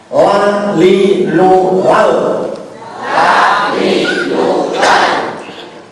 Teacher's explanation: Kalau mengajar harus mengawasi bibirnya, mengawasi lisannya ya. Jadi ujung lidah terkena gusi gusi. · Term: lam